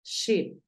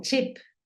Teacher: la sh es un poquito más suave es como cuando le decimos a alguien que haga silencio